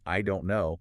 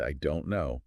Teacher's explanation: But if I use the exact same three words and I say them slowly, stretching out the vowels, and I raise my pitch at the end